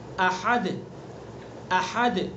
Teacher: دال کے اندر قلقلہ کریں گے، اور حمزہ اور ہا دونوں حلق سے نکلیں گے، لیکن حمزہ کو سینے کی طرف سے نکالیں گے اور ہا کو زبان حلق کے بیچ سے نکالیں گے۔